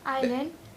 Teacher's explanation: That S is silent.